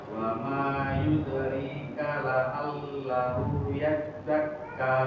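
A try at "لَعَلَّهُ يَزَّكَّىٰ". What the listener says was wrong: Baik, tinggal huruf ainnya Pak. Lebih dipedaskan lagi. La'allahu. La'allahu coba. Ya, la'allahu yazzakka.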